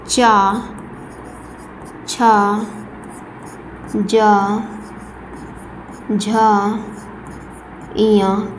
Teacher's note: तालव्य व्यंजन होंगे हमारे च झ ञ